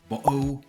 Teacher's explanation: how British people drop their T's